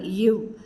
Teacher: மேல்வாய் பல்லை கீழ் உதடு பொருந்துவதால் பிறக்கின்றது